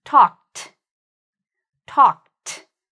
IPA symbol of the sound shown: t